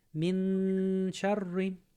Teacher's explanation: Yeah, you're gonna mute the sound a bit, and you're actually prepping your mouth for the sheen. So from the min, you're getting ready to say sh sound, and you're gonna add that double counted gunna.